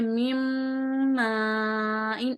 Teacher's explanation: دو حرکت کے جتنا رکیں گے اس کو پڑھیں گے میم ان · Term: غنہ